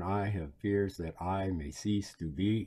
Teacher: fears that i may cease to be yep perfect diamond pentameter unstressed stressed unstressed stressed i mean that pattern of the syllables going through it